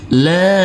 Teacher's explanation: Huruf lam kita baca panjang dengan panjang 2 harokat karena di atasnya ada huruf alif kecil yang berdiri tegak lurus.